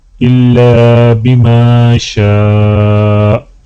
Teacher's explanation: اور الف کو جب ملائیں گے تو الف کے اوپر مد ہے تو الف کو تھوڑا کھینچ کر پڑھا جائے گا